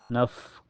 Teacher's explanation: Nah, di sini ada fa sukun mutlak dan makhraj fa itu bibir bawah kena gigi seri atas ya. Mempunyai sifat hamas ya. Naf, keluar napas.